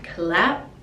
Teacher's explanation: the p we don't really pronounce it we just put the lips together